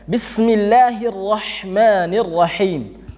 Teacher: Ada huruf H yang dimana tempat keluarnya adalah wastul halki, pertengahan tenggorokan, huruf H. Jadi ingat teman-teman, di pertengahan tenggorokannya ada huruf, salah satu huruf yang keluar di tengah tenggorokan adalah huruf H.